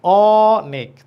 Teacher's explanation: অ এখানে মুখ বড় হয়ে যাচ্ছে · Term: বিবৃত